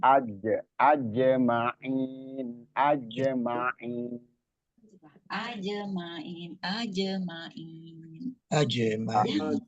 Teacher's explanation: di huruf jim itu nggak ada hames ya, nggak ada kebocoran.